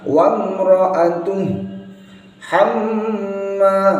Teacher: hamma ini harus ada dengungnya